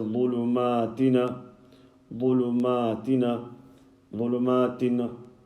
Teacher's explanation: It's as though you're vowelizing and you're adding a noon with a fatha.